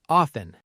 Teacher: Some learners pronounce the T clearly, off-ten, but a lot of native speakers say often with a silent T.